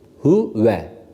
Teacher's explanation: çok ince bir şekilde hu değil de o uyu arası bir sesle